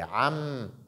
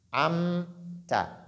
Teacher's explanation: lire distinctement am on dit am ensuite on dit ta ta le point d'articulation de mim fonctionné le point d'articulation de ta a également fonctionné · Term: la clarification